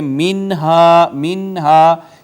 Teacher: نون ساکن کے بعد یہاں بھی حروف اظہار آیا لہٰذا اس پہ اظہار ہوگا، آواز نہیں چھپائی جائے گی، ہم پڑھیں گے منہا منہا، اس کو منہا نہیں پڑھا جائے گا۔